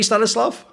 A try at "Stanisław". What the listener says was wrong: Yeah, and it's in Polish language, we don't pronounce the L. It's like an L with an accent on the L itself. Right. It's a W sound, so Stanisław would be the correct pronunciation.